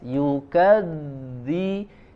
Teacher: dibenturkan walaupun ringan ya benturan atau sentuhannya ya, dari ujung lidah ke ujung gigi seri bagian atas. Yukadzi, tidak mengeluarkan angin, tidak mengeluarkan desis. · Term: huruf dzal